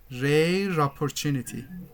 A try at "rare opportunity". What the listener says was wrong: No, you link R with oppo. Opportunity. Rare opportunity. Rare opportunity.